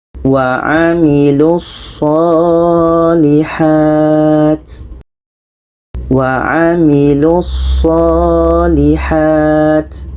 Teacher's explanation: 'Lu' ini pendek karena terhubung dengan huruf yang memiliki shadda.